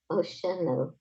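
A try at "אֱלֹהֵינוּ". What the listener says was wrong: Nope. The dot's on the left.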